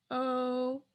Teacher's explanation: mid open mouth rounded